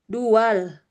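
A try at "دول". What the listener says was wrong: Dual, bagus.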